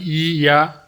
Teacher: താവല്യം എന്ന് പറഞ്ഞാൽ അണ്ണാക്കിൽ വെച്ച് നിശ്വാസവായു തടസ്സപ്പെട്ട് ഉച്ചരിക്കുന്നവ താവല്യം.